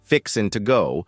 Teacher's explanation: a Texan accent might drop the G in words like fixing to go